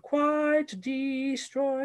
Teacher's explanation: i made that d sound very nasal to make it uncomfortable sounding